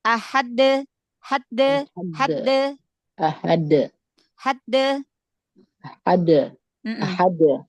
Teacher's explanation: dia syiddah dulu nempel dulu di makhraj huruf Dal lalu qolqolah cepat karena dia tidak ada tasydid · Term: Qalqalah